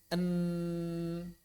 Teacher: Syiddah mulutnya n terkunci rapat tapi mengalir melalui rongga hidung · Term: konsonan nasal